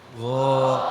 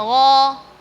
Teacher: Terus dari segi bacaan tadi sudah tepat dari segi makhraj. Namun ketika melafalkan huruf ghain dengan berbagai harakat, dia mau fathah ataupun kasrah, dhamma, sukun, tetap tebal. Tapi level tebalnya itu beda-beda.